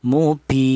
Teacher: boleh dibaca tawas artinya sedang. yaitu panjangnya dua alif atau empat harakat